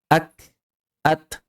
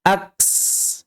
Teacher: huruf kaf dan ta ketika terlepas tidak menghasilkan bunyi baru, melainkan hanya menghembuskan napas saja